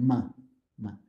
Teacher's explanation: And your nose, you get ma, ma. So for example, the labial nasal sound is the ma sound.